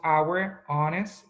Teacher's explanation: no pronunciamos la H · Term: H muda